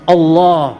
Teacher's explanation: there's no hard consonants there's a minimal movement the lips do not move at all